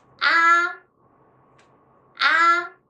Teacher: high level and very high pitched